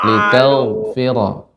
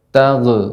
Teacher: ghain ketika sukun masuk huruf yang isti'la, namun tidak boleh memantul, tidak boleh tag, namun tel.